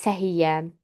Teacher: sözün kökü bu formada olmağına baxmayaraq tələffüz zamanı y-nın biri düşür